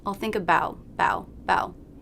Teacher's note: the ow as in now diphthong it's not stressed so we don't need too much jaw drop i'll think about bow bow the lips will probably round a